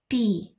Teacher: він складається із двох звуків і це звук М'який приголосний він глухий